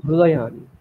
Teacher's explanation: ঋকার রয়েছে, ঋগ্বেদ বলে আমরা রু বলবো